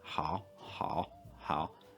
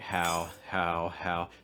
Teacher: feels like i'm kind of blocking air a little bit again towards the back of my mouth